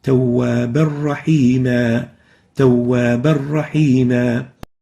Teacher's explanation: There is a tanween here, tawwaban, followed by a ra. When we merge them together, we don't pronounce the tanween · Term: Idgham without gunna